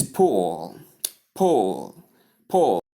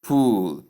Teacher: this word takes the short oo sound, not the long ooh sound.